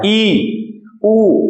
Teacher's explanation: आप देख रहे हैं मेरा होठ नहीं हिल रहे होंगे, ई के उच्चारण में बिल्कुल हेठ नहीं हिलते थे, ऊ बहुत हल्का सा अंतर आता है, ई ऊ, इनके उच्चारण में मुख में बहुत हल्का सा अंतर आता है। तो ई ऊ जो हो गए वो हो गए संव्रत, लगभग ना के बराबर खुलता है मुंह।